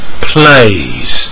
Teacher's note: we add a consonant sound and make the overall sound longer we don't add a syllable